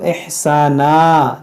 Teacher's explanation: जब वक्फ करेंगे तो इहसाना, दो ज़बर को अलिफ से बदलेंगे